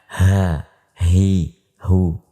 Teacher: H adalah huruf yang keluar melalui pangkal tenggorokan atau tenggorokan yang paling bawah. Bahkan sebagian ulama mengatakan bahwa huruf H itu dikeluarkan melalui dada sehingga kita mengucapkan ha, hi, hu, ya.